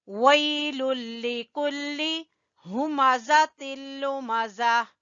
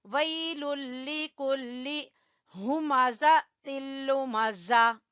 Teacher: وی، یہاں پہ یا لین ہے اور یہاں پر لام کو باریک پڑھیں گے، کاف کو بھی باریک پڑھیں گے